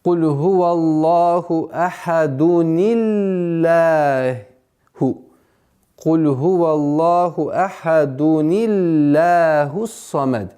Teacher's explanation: лям в этом слове произносится мягче. Почему? Потому что предшествует ей огласовка касра. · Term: встреча двух согласных